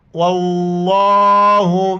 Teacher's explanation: واللہ، لفظ اللہ سے پہلے جو واو اس پر زبر ہے تو لفظ اللہ کو موٹا کر کے پڑھیں گے، بیچ میں الف اور لام کو نہیں پڑھیں گے، واو کو لفظ اللہ کے دوسرے لام کے ساتھ ملائیں گے اور کڑا زبر کی وجہ سے ایک الف کی مقدار اوپر کھینچنا ہے